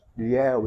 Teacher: Ilhéu, eles se abrem. Então, ditongo decrescente, oral, aberto.